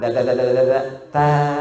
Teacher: Da dengan ta, tempatnya sama